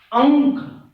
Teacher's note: आप जीभ को तालू में सटाते हैं और मुंह से सांस को निकलने में बाधा उत्पन्न होती है और नाक से ज्यादा ध्वनि का उत्पादन होता है, सांस का ज्यादा जो है कि बाहर निकलता है नाक से, तो वो अनुस्वर है। · अंक, आप जीभ को तालू में सटाते हैं और मुंह से सांस को निकलने में बाधा उत्पन्न होती है और नाक से ज्यादा ध्वनि का उत्पादन होता है, सांस का ज्यादा जो है कि बाहर निकलता है नाक से